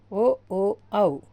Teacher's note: కంఠోష్టములు కంఠం మరియు పెదముల నుండి పుట్టినవి